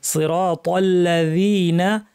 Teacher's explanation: জি বলার সময় জিহ্বাকে উপরের দাঁতে লাগিয়ে নরম করে বলবেন